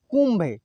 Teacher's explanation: यहाँ पे नहीं न का उच्चारण हुआ और नहीं अण का उच्चारण हुआ, यहाँ अलग ही शब्द का उच्चारण हो रहा है, म का उच्चारण हो रहा है।